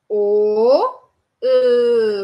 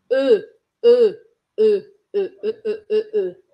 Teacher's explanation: gruda a pontinha da língua lá no dente de baixo e você vai pronunciar o som do E em francês, que é esse som fechado